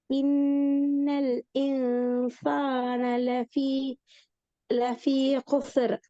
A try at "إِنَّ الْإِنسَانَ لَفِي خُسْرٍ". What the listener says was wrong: லஃபி خسر. லஃபி خسر. خسر சீன் கலக்கப்படுது.